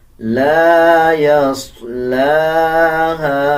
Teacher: صاد کو پر پڑھا جائے گا، لام کے اوپر کھڑا زبر ہے، 1 سیکنڈ لمبا کریں گے. ہا کے بعد الف ہے اور الف کے اوپر چھوٹا مد ہے، 3 سیکنڈ لمبا کریں گے. اس لام کو اس لام کے ساتھ ملا کے پڑھا جائے گا.